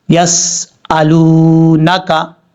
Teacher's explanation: واو ساکن سے پہلے پیش ہو تو واو مدہ ہوگا۔ اب یہاں پر ایک الف کی مقدار واو کو لمبا کر کے پڑھیں گے